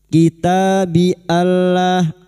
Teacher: nun sukun bertemu lam idgham bila guna, masuk tanpa mendengung, masuk pada huruf lam tanpa mendengung.